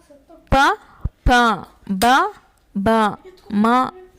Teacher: ಓಷ್ಟ್ಯ ಅಂದರೆ ತುಟಿ ಅಂತ ಅರ್ಥ. ತುಟಿಗಳ ಸಹಾಯದಿಂದ ಹುಟ್ಟುವ ಅಕ್ಷರಗಳನ್ನು ಓಷ್ಟ್ಯಾಕ್ಷರಗಳು ಎಂದು ಕರೆಯುತ್ತಾರೆ